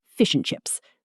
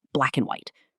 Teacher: And in fast speech becomes just n.